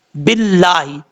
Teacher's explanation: دیکھیں یہاں پر لفظ ہے باللہ، یہاں پر جب با کو لام سے ملائیں گے تو اس میں پہلا یہ جو با کے بعد الف ہے اس کو بھی چھوڑ دیں گے، الف کے بعد لام آ رہا ہے اس لام کو بھی چھوڑ دیں گے، با کو ڈائریکٹ جو ہے وہ جس لام کے اوپر شد ہے اس کے ساتھ کنیکٹ کریں گے